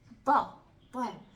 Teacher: یہ جو نوک ہے وہ تو جو دندان ثنایا کے اندر کا گوشت ہے ادھر لگتی ہے, لیکن زبان کا یہ جو کچھ سرا ہوتا ہے نا وہ نتا کو لگتا ہے اوپر. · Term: حروف نتعیہ